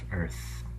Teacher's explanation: The E, A, and the R are all subsumed together into an and then a th, the unvoiced interdental fricative